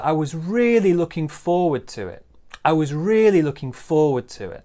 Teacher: So big stress on really, looking forward to it. Maybe a small stress on looking.